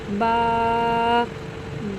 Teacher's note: بچوں الف بالکل سیدھا ہے، ایک لکیر کی مانے۔ با، بچوں با کو ہم دونوں ہونٹوں کو ملا کر پڑھیں گے اور تھوڑا سا لمبا کر کے پڑھیں گے۔ با، تا، بچوں تا کو ہم زبان کو اوپر تالو کے ساتھ لگائیں گے اور تھوڑا سا لمبا کر کے پڑھیں گے۔